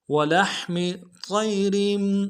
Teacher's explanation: ولحم میں لام کو ہا کے ساتھ ملانا ہے، ہا کو گہرائی سے ادا کریں گے